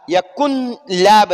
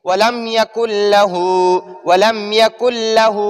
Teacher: तो नून साकिन को इस लाम में मुदगम करेंगे, लाम में दाखिल करेंगे, यानी नून साकिन को हम डायरेक्ट इसमें दाखिल कर लेंगे, इसको इसमें छुपा लेंगे।